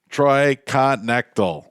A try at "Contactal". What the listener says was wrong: No, you pronounce the K.